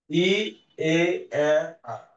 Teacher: ঠিক আছে, আর প্রত্যেকের তুমি অর্থাৎ জিভটা যখন এখানে উপরে আছে ই, আস্তে আস্তে জিভটা নিচের দিকে নামছে